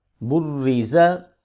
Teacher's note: را کے نیچے زیر ہے، اس کو موٹا نہیں کریں گے، اور زیر زبر اور پیش کو لمبا نہیں کرتے بلکہ ان کو ویسے ہی پڑھیں گے، یعنی کہ لمبا کرنے کے بغیر۔